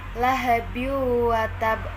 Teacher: huruf wawu harus dibaca dengan melebur dengan huruf sebelumnya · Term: Idgham Bighunnah